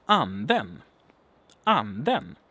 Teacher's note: it's a kind of a falling tone. To me, it's there are two peaks, basically. We have a major peak and then a smaller, not as high peak. So it's basically a falling tone, but it goes like this. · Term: grave accent